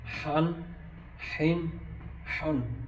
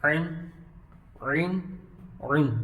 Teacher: یہ دونوں حلق کے درمیانے حصے سے ادا ہوتے ہیں